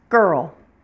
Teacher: er or our sound is pronounced with rounded lips and tense lips so you should definitely feel the tension the muscles tighten in · your tongue will be pulled backwards toward the back of your mouth and it will be all bunched up together and not touching anything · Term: ER sound